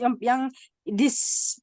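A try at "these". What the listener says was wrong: Nah, ini bacanya this, bukan this. Kalau this kan pendek jadi lebih panjang.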